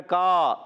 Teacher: کانا میں الف مدہ ہے، ایک الف کھینچنا ہے